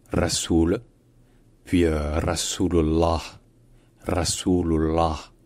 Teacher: c'est un R qui est roulé évidemment et surtout le ou au milieu est un ou long